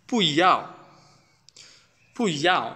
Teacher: যখন এটা 4th টোনের পূর্বে বসে ইটস বিকাম second tone.